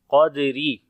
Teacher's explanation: را کے نیچے زیر ہے تو باریک پڑھیں گے را کو